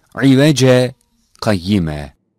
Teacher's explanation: the double fetha in the word عوجا is turned into a fetha and the pause is placed on the vowel of elif. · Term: Sekte